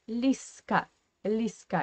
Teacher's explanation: we write Лизка, but we pronounce Лиска. Yeah, we say С.